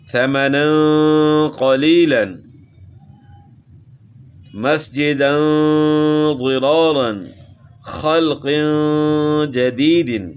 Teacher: 2 زبر کی تنوین کے بعد اور یہاں 2 زیر کی تنوین کے بعد اخفا کے حروف میں سے حرف موجود ہے تو اس لیے غنہ اخفا کے ساتھ کر رہے ہیں